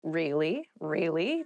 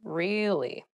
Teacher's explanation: you can use it to show you are interested in a conversation with upward intonation